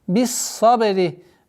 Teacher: С огласовки кесра мы уходим на удвоенный сад. Свистящий звук, твердый звук.